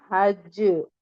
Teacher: कलकला अकबर होगा सबसे हैवी कलकला होगा